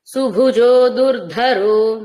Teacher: సుభుజోలో ఉన్న భకారం దుర్ధరోలో ఉన్న ధకారం దుర్ధ అక్కడ వచ్చిన ఒత్తుగా అంటే సంయుక్తమైన ధకారం మహాప్రాణం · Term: మహాప్రాణ ధకారం